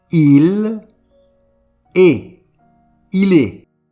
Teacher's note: On ne prononce pas le S ni le T.